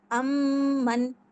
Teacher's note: نون میں نے چھپایا ہے، غنہ کیا ہے امن. میم کو میں نے ظاہر کیا ہے اگلے ورڈ کو.